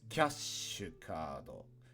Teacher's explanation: this is sheet plus you which is shi so it's kashukado put a little pause and hold the sh on shi a little longer than you should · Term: glottal pause